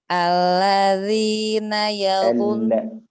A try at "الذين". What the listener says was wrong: لا، تحقيق اللام أفضل. الذين. Alladzina.